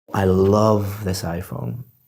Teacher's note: so I'm emphasizing the word love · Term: word stress